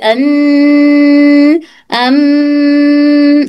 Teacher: गु अम अन इस तरह से अन अम आवाज नाक में वाइब्रेशन हो के नाक के रास्ते से आवाज बाहर निकलती है। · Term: गुन्ना